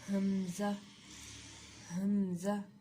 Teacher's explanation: حمزہ کا مخرج ہے اقصی حلق سے سینے کی طرف والا